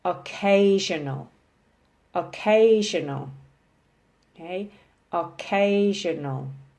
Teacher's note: there are four circles four syllables emphasis is on the second syllable